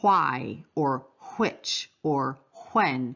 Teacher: when English speakers add almost like a h before the w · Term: regional variation